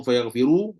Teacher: Kalau baca sambung fayaghfiru, ru tebal lah sebab dhammah. Tapi kalau berhenti dengan rob, fayaghfiru.